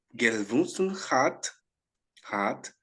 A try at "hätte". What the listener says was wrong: Hätte? Hätte, com esse trema aqui, hätte.